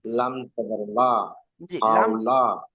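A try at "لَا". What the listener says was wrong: লামটাকে আমরা যদি একটু টান দিয়ে পড়ি তো আরো সুন্দর হবে।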